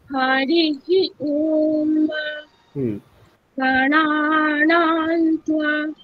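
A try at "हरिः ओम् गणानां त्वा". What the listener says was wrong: নাতে উপর দিকে উঠিয়ে দিলেন, নাতে উপর থেকে নামবে নিচে।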